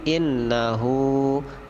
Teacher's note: Inna itu adalah ghunnah ditekan dua harokat